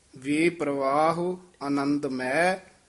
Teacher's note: ਮੈ ਦਾ ਉਚਾਰਨ ਨਾਸਕੀ ਨਹੀਂ ਕਰਨਾ ਹੈ